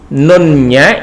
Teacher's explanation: dibaca dengan menempelkan diantara dua bibir jadi Nun nya ini berubah menjadi min itu bibirnya menempel dua bibir menempel jadi bibirnya bibirnya menempel ya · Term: bacaan iqlab